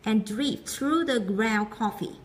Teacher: Ground coffee, đọc mỗi là ground coffee, không còn âm d nữa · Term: nuốt âm